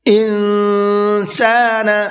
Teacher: یہاں پر یہ نون ساکن ہے اور نون ساکن کے بعد میں سین آ رہا ہے، سین اخفا کے حرفوں میں سے ہے، تو یہاں پر نون کے اندر تھوڑا سا اخفا کریں گے